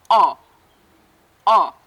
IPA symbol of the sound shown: ɒ